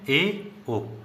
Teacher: ऐसे स्वर जिसमें मुख द्वार आधे से कम खुले या फिर कह सकते हैं कम मुख खुले। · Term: अर्ध संवृत स्वर